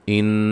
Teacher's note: نون مشدد پہ غنہ ہے ، لفظ اللہ کے لام کو موٹا ادا کریں گے، یج